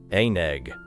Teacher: The consonant remains grammatically part of the first word, but in the sound stream, it leans into the second word.